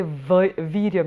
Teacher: it is designated as a dantoshthyam, which means that teeth have to come on the lips. So it's a v sound.